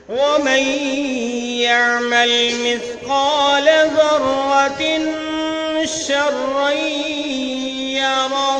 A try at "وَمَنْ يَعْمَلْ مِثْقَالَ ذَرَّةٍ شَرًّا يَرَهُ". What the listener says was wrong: مثقال لام کو لمبا نہیں کریں گے